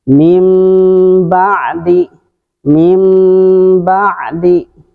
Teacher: iltimas, merapatkan kedua bibir secara sempurna tanpa ada tekanan.